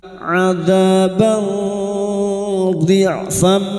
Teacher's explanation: Kita samarkan bunyi fathah tanwin atau fathatain dan mendengung selama 3 harakat. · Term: ikhfa hakiki